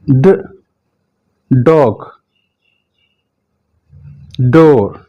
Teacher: जड़ और रिज के दरमियान में जाकर आपकी जुबान टच करेगी।